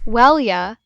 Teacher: you sounds like well ya the Y sound is very soft